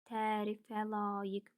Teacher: tərkibində saitlərin ikisi uzun tələffüz olunur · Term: uzanma